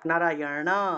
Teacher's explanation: মূর্ধন্য এর উচ্চারণটা মূর্ধা দিয়ে উচ্চারণ করতে হয়